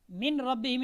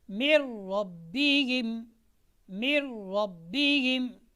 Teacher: جو نون ہے اس کو ہم نے را کے ساتھ ملانا ہے